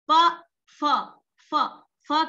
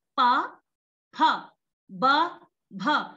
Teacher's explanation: ये एक मैं जनरली सामान्य बात बता रही हूँ, बल्कि जो पवर्ग है वो हमारा ओष्ठ्य वर्ण है। ओष्ठ्य, ओष्ठ से बोले जाने वाला पवर्ग